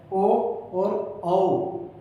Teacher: कंठ और होठों से जिनका उच्चारण होता है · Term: कंठोष्ठ्य